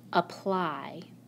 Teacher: In this word, the letter Y stands for the long I sound. The syllable with the long I sound is also the accented syllable.